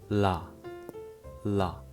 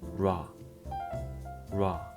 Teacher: L starts with your tongue at the front like la, la, and R starts with your tongue further back like ra, ra